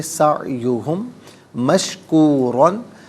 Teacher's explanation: فَأُولَئِكَ كَانَ، سعیو علیحدہ ہم علیحدہ، ملا کر پڑھیں گے سعیہم مشکورن، سعیہم میں میم ساکن ہے، اسے مشکورن کی میم کے ساتھ ملائیں گے، میم کی آواز کو غنے کے ساتھ ادا کریں گے۔